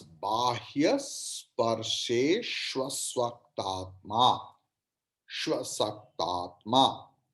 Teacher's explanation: U and A becomes Va